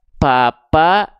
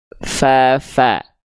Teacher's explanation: pa enggak enggak ngalir nafasnya FA mengalir nafas dengan deras